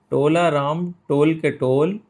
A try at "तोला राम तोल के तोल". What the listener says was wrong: टोल के नहीं, तोल के।